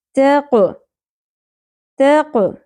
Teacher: تا کو باریک رکھتے ہوئے قوف کو پر کرنا ہے اور قلقلہ بھی کرنا ہے